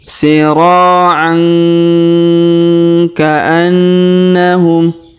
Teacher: huruf ain tanwin bertemu huruf ka maka kita dengungkan dan kita samarkan cara bacanya.